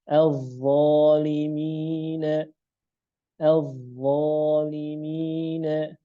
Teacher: dha isti'la, setelahnya alif, maka alifnya menjadi tebal karena dha isti'la.